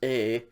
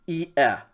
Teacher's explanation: Okay, so epsilon iota says a. Iota epsilon is not a diphthong, so you would pronounce those two vowels separately. Iota is e, and epsilon is e.